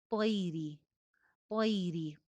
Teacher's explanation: طا موٹا حرف ہے، اوپر والے دو دانتوں میں زبان لگے گی اور موٹی ادائیگی ہوگی ، آگے یائے لین ہے، طیری، طیری، طا موٹی ہے لیکن